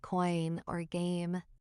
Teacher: your voice literally glides from one sound into another in the exact same syllable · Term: diphthongs